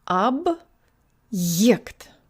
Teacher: you pronounce the b with your tongue farther back. Ab.